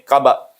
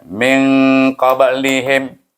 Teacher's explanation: Apabila kita menyambung dengan lihim, maka qalqalah itu akan bunyi sugra, bunyi perlahan. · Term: qalqalah sugra